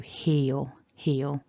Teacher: really that's one syllable so don't try to make a gap or a break after that vowel just let it run through heal heal now that dark owl if you're not familiar with